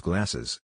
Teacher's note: to make it plural you end up pronouncing it as glasses you added an extra e between the s's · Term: parenthesis